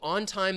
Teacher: your tongue is going to be up behind your top front teeth but we're going to stop the air and then we're going to release right in to that t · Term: coarticulation